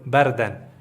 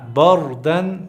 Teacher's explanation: دا را به ډکه وایو